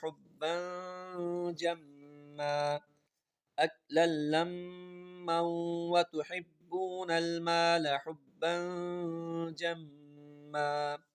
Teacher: حُبًّا ہم دو زبر آ رہے ہیں، ہم نے دیکھا کہ اس کے بعد جیم ہے تو یہاں پر غنہ کریں گے